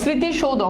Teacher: মফালাগুলো শব্দের শুরুতে আছে ওটার কোন উচ্চারণ আসতেছে না